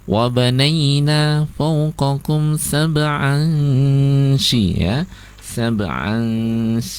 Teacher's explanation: Kemudian wabanaina fawqakum sab'an ya, dengungnya di situ ikhwanya tidak bunyi n atau tidak bunyi berakhiran eng ya, antara n dan eng di tengah-tengahnya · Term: ikhfa